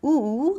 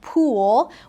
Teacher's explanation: there are other vowel sounds like oo, like in a word like pool, where our tongue is pulled towards the back part of our mouth.